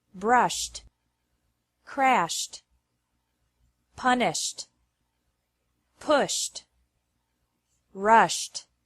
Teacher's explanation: e d is pronounced like T after verbs ending with an sh sound